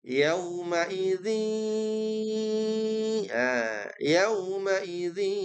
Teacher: dengungannya juga panjang ya, nggak boleh buru-buru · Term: idgham bi gunnah